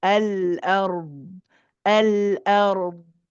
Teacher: And a lot of people will say ala, ala ard, ala, right? They bounce the lam, alla, alla. It shouldn't be alla, it should be al. Hold it